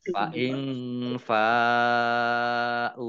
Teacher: nun sukun bertemu dengan huruf fa, bacaan ikhfa dibaca samar-samar.